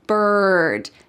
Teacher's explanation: it uses that colored R, that hard R sound